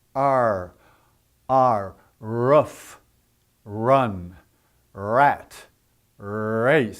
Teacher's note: So we have R. Now the tongue sort of curls up toward the top of the roof of your mouth.